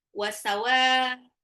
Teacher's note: mad wajib muttasil Ya, dibaca enam harakat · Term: mat wajib mutasil